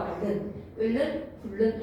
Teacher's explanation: 유음안의 유음이 아닌 자음, 니은의 비음이 유음을 만나서 같은 유음, 리을로 바뀌는 현상이야